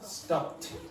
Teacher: Now p has no vibration. So because it has no vibration, it's pronounced with a t.